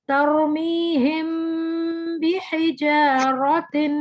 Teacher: یہاں پہ میم کے بعد جب با آیا تو ہم نے ناک میں آواز لے کے گئے اور غننے کے ساتھ اس کو ادا کیا۔ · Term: اخفاء